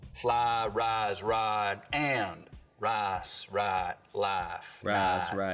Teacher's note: In most of the Piney Woods belt, though, there's always been what we can describe as full price smoothing, where some Southerners smooth the diphthong in words like fly, rise, and ride, but use a diphthong in rice and right. Here in the Piney Woods belt, we're going to smooth them all.